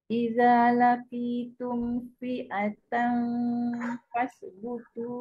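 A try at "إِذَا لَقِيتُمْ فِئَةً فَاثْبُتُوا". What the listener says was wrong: Yang zal tu nipis sikit dia hujung lidah di hujung gigi.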